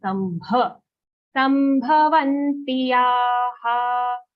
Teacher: bha sound, don't say sambha. It's a mahaprana sound as we call it.